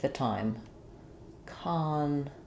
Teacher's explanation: And so you can hear in conflict, we have a clear ah vowel for letter O. That's because when the letter O is in the stressed syllable, it typically will say the ah sound, conflict.